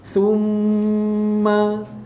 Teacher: summa wajibul gunnah, summa dengung, tutup mulut, 2 harakat.